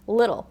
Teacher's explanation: little has what we call a 'flap t.' So when it kind of sounds like a soft 'd,' sound